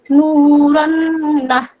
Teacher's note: এক আলিফ পরিমাণ গুন্নাহ সহকারে পড়তে হবে